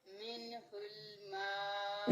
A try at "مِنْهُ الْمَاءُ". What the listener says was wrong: نون ساکن کو ہلانا نہیں ہے. منہ الماء،